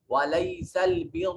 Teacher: را کو موٹا پڑھا جا رہا ہے، یہاں مفخم طریقے سے پڑھا جا رہا ہے